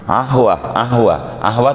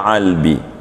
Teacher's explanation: orang Mesir asli itu qaf tuh jadi ain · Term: dialek